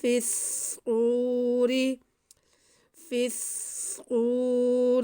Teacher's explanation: ینفخ، یوم ینفخ فی الصور، فا کو صاد کے ساتھ ملانا ہے، کیونکہ صاد مشدد ہے اور صاد حروف مستعلیہ میں سے ہے، اس لیے ہم صاد کو موٹا کر کے بھی پڑھیں گے۔ ینفخ فی الصور، فی الصور، واو ساکن سے پہلے پیش واو مدہ ہے، اس کو ہم کھینچ کے واو کو پڑھیں گے۔